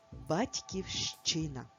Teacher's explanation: Куди ми ставимо наголос в цьому слові? На звук и.